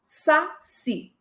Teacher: A palavra saci tem acento tônico na última sílaba, mas não tem acento gráfico.